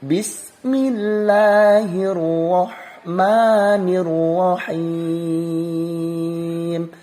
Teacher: Ro-nya ada syiddah, syiddah ditekan, dikuatkan.